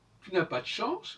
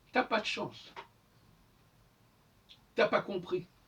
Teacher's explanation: vous remarquerez que dans bien des cas le U disparaît